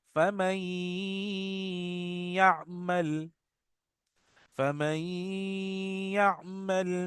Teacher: इसमें हम इदगाम बा गुन्ना करेंगे, गुन्ना करते हुए मिलाएंगे। इसको इदगाम बा गुन्ना कहते हैं, ठीक है ना, इदगाम बा गुन्ना।